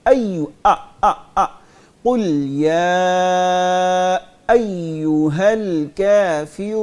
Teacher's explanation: قل يا أيها الكافرون جی بیٹے اس میں مد بھی پوری کریں گے اور حمزہ کو بھی واضح کر کے پڑھیں گے، مد کو اور حمزہ کو مکس نہیں کرنا، یا ایو، قل یا ایوہ الکافرون، قل يا أيها الكافرون حمزہ کو سختی سے پڑھیں گے، اس کو عین کی طرح نہیں پڑھیں